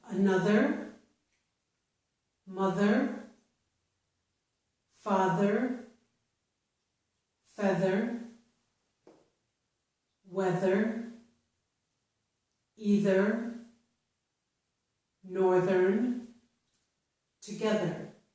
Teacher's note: So in each of these words, TH is in the middle of the word, but it's part of the string of letters THER, and the THER is pronounced with the voiced sound, and it's ther. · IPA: /ð/